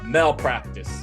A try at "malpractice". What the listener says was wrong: Malpractice. You said male again. Or Mel. Melvin.